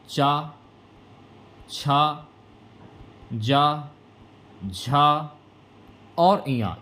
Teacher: च छ ज झा और या यह तालू से बोले जाते हैं